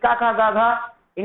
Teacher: का वर्ग के 5 अक्षर कंठ से बोले जाते हैं